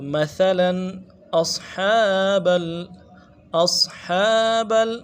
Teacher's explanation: اصحاب صاد کو موٹا کرنا ہے۔ ہا کے اوپر کھڑا زبر ہے، ایک کھینچنا ہے، اور ہا کو گہرائی سے ادا کرنا ہے · یہاں پہ اظہار ہوگا کیونکہ آگے حروف حلقی میں سے حمزہ آ رہا ہے